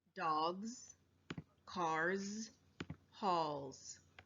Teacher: So you can put your hand on your throat. When you say the Z sound, you can feel your throat vibrate. · All of these words have a voiced sound as the last sound of the base word, so the suffix s makes a z sound. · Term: voiced Z